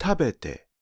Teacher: The te-form is 食べて (HLL), and the last two morae drop in pitch. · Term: pitch drop